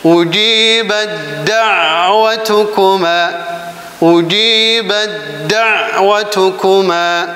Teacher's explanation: Nah, jadi taknya langsung masuk ke ta. Kemudian huruf ta masuk ke huruf dal. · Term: idgham mutajanisain